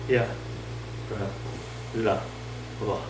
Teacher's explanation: Ya start inside, ra further, la further, va further.